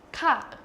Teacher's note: It's just a short falling tone